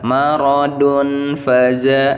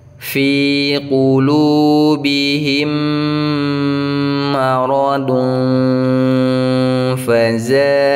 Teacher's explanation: cara bacanya didengungkan dulu dua harakat ditahan kemudian masukkan bunyi ee apa namanya nun sukun ataupun tanwinnya ee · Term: ikhfa